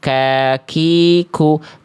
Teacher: Tuh antara langit-langit lunak dan keras. Kalau kaf lebih luar ada percikan nafas. · huruf kaf pangkal lidahnya nempel ke langit-langit antara langit-langit lunak dan keras. Nah, jadi beda nyentuhnya.